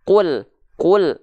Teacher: Terindikasi di ujung pelafalan lam sukun bukan keluar bunyi konsonan al, tapi bunyi vokal eu. Eu tuh kalau di Sunda tuh ya, kalau di dalam bahasa Sunda tuh kul, kul. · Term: memantul